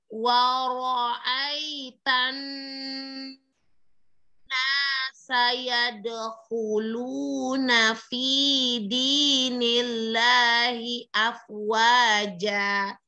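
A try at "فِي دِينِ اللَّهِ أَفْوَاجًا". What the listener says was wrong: Ini panjang sayang. Fi dini, jangan fi dini, ininya panjang. Di ayun fi sama fi dinillahi afwaja ja ninya panjang sayang.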